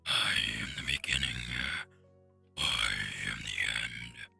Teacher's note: I have to speak slower and it's a lot more breathy